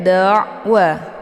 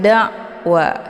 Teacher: Jadi jangan langsung ditekan wa, itu bacaan yang salah, tapi dialirkan setengah saja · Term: tawasud